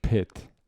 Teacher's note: we have a short puff of air when we say word like pit um right if you hear P there's a short H like